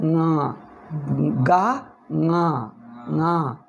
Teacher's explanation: ಙ ಈ ಗಾಕಿ ಸ್ವಲ್ಪ ನಾಸಿಕ ಸೇರಿಸಿದ್ದೀವಿ, ಮೂಗಿನಿಂದ, ಅದರಿಂದ ಗಾನು ಮೂಗಿನಿಂದ ಹೇಳಿದರೆ ಙ ಙ ಆಗಬೇಕು. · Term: ಅನುನಾಸಿಕ